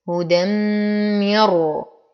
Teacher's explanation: هدى من تنوين وبعده الميم في الكلمة الثانية فالحكم إدغام مع غنة أكمل ما تكون. هدى مر نون ساكنة وبعدها الراء أيضا الحكم إدغام كامل لكن بلا غنة